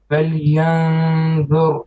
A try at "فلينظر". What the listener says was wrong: Too flat. فلينظر.